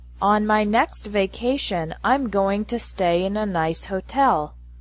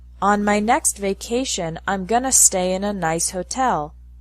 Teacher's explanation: in spoken English, going to is often pronounced gonna